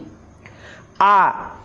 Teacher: आ एहा अग्र विवृत और पश्चात विवृत मध्यवर्ती एक स्वर। हिंदी आ परी एहा दीर्घ नुहे ह्रस्वई एवं दीर्घई।